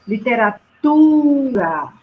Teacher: a sílaba tônica da palavra literatura é a penúltima sílaba